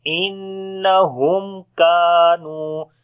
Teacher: On the noon there is shad sign, we make gunna. After the meme sakin, the next letter is kaf, we make izhar shafawi here, the clear sound of meme.